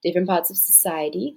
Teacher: that's an uprising intonation, it sounds like it's questioning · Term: questioning intonation